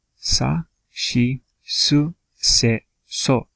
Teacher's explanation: this shi is actually different than the rest of the sounds in the s row, right? Because the other sounds have this s sound, and this is the only one that has this sh sound, right? But bear in mind that that's just a vocal change, right?